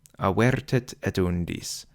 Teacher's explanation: The accent for avertit is on the E syllable, which is the beginning of the foot, and the accent is on the U syllable in undis, also the beginning of the foot